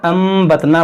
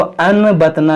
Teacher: नून साकिन के बाद बा है, यानी कि यहाँ पर इक़लाब का कायदा लगेगा। यहाँ पर अम्बतना पढ़ेंगे, इसको अनबतना नहीं।